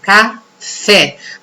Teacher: Oxítona, a última sílaba é mais forte.